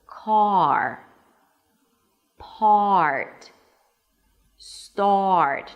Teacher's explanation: Notice it has two parts, the vowel and then the R. And also notice that the vowel at the beginning is very clean and clear.